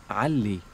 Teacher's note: the sound that is like ah, but it comes from the middle of the throat.